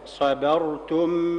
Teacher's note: رقق الباء وفخم الراء. الباء هنا مرققة بين مفخمين، الصاد والراء.